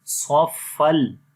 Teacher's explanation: دو زبروں کے بعد لام آ گیا ہے تو یہاں پر ادغام تو ہوگا لیکن بغیر غنہ کے